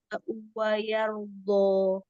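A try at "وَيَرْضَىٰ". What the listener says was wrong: Wayardo, donya dibuka, jangan dimajukan begini.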